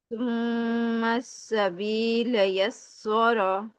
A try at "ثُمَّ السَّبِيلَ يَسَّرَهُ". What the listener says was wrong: یسا سین کو باریک رکھیں. یسارہ. یہ سو نہ کریں. یسا سین زبر سا. یسارہ.